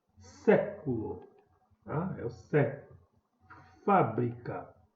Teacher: assim como sílaba tônica é a antepenúltima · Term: proparoxítona